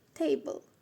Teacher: We stress the first syllable. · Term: word stress